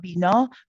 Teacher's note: you're dropping your jaw a lot, bina, but also the back of the tongue is slightly raised. It's not as relaxed.